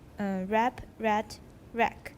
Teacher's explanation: have a glottal stop just before final voiceless stops